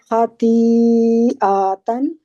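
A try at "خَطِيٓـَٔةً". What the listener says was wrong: आ को लंबा नहीं करना, आ के आगे अलिफ नहीं है।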